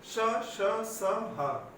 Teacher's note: ऊर्जा और वर्णों की अपेक्षा में अधिक निकलती है, वह ऊष्म व्यंजन है।